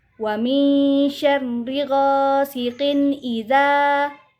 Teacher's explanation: apabila ada harokat fathah bertemu dengan alif saksi, maka dibaca panjang 2 harokat atau 2 ketukan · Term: mad tabi'i